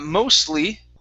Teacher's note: Okay, to save time, we don't say mostly, okay, and pronounce the T. Okay, the T gets swallowed into the L sound because the tongue starts at the same place with both of those words